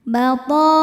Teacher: maka huruf th-nya panjang boleh empat boleh lima harakat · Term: mad wajib muttasil